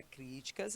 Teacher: A palavra críticas é classificada como uma proparoxítona. A sílaba mais intensa é a sua antepenúltima